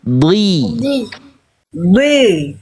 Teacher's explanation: Cuman harakat kasrahnya jangan dikorbankan. Jadi pangkal lidah naik ketika vokal i. Tengah lidah diangkat.